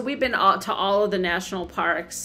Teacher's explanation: In the phrase we've been to, the words have and to become very weak and you only hear the and ta.